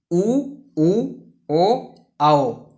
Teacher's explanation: दूसरा होता है वृतमुखी स्वर। इनके उच्चारण में ओठ वृत्त या गोलाकार के रूप में होता है